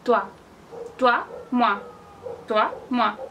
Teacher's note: O, I, se pronuncia ua.